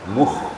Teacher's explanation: Apabila ada huruf damma sebelum Kha apalagi Kha itu sukun maka khanya lebih menonjol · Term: huruf Kha